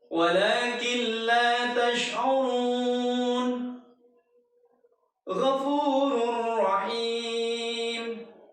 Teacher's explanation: Nun sukun atau tanwin ketika bertemu dengan salah satu huruf lam atau ra, maka dibacanya adalah melebur. Kita meleburkan huruf nun sukun atau tanwin pada huruf lam atau ra. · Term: idgham bila gunnah